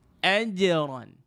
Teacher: tengah lidah tuan-puan ni naikkan betul-betul. Tekan dekat langit tu supaya dia tak keluar bunyi c. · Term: huruf jim